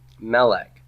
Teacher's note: we always keep the accent on the first syllable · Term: first syllable stress